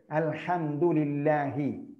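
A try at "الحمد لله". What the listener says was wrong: ഒരഞ്ഞു വന്നിട്ടില്ല. പഴയ പോലെ അല്ല.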